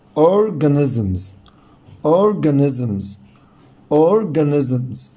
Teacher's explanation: هنا الاسترس على المقطع الاولاني، فطول فيه وعلي فيه صوتي